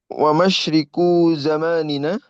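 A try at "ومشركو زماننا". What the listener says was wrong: Mu pakai dhammah. Wa musyriku zaman.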